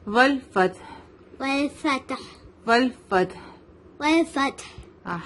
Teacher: ہا کی آواز مڈل تھروٹ سے آئے گی, ٹھیک ہے. حلق کے بیچ والے حصے سے ہا نکلتا ہے.